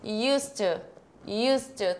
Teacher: você não vai falar esse D você não pronuncia esse D você vai falar US to us to tudo junto US to